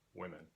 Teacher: The vowel of the unstressed syllable has influenced the vowel of the stressed syllable and made it more like itself, in this case identical to itself, women, instead of woman or something of that nature. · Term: umlaut